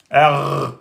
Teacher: Cette lettre ressemble au R français à la différence qu'elle est grave et emphatique.